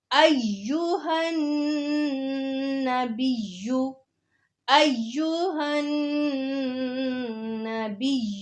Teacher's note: نون مشدد پہ غنہ کرنا ہے